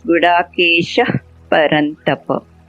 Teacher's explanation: you get a slight F sound, not exactly F, but when there is a P after a Visarga